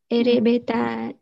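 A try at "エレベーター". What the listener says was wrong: Đúng rồi, mình xin lưu ý bạn một chút về cái từ erebeta. Erebeta mình đằng sau nó có cái gạch ngang, mình phải hơi kéo dài nó ra một chút nha.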